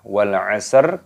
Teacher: Lamnya berharokat sukun, ini dimatikan, dibaca wal asr. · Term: alif lam qamariyah